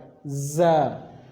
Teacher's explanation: اور جیسا کہ آپ نے سین کو پڑھا تھا، دانتوں کو ملا کے سیٹی کی آواز آئی تھی، اسی طرح آپ نے زا کو پڑھنا ہے، زا، دانتوں کو ملا کر، زا۔